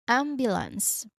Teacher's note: So, you break it into three parts and make sure that the stress stressed syllable here is on the first part which is am.